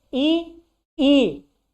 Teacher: अब आते हैं ई, जब हम ई बोलते हैं तो मुख हमारा जो होता है सम माने बराबर, वृत्त माने गोला, यानी बराबर से भी क्या होता है, बराबर पर मुख पहुंचकर, मतलब जो विवृत अर्ध विवृत होता है उससे बहुत कम खुलता है, और जीभ जो होती है ऊपर ऊपर ज्यादा ज्यादा ऊपर जाती है, इसीलिए इसको क्या कहते हैं, समृद्ध कहते हैं।